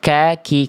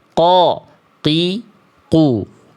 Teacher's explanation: Qaf dan kaf. Kaf adalah huruf yang tipis. Ka, k. Namun, huruf qof adalah huruf yang tebal. Qo, qi , qu.